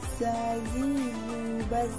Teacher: Melafalkan huruf za, dikeluarkan dengan ujung lisan, diucapkan dengan mengalir suara tanpa diiringi dengan udara. Suara za sama seperti dengan dengungan tawon.